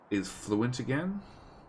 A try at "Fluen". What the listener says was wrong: Fluent. No T.